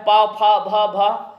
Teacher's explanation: ये जाएगा ओष्ठ के साथ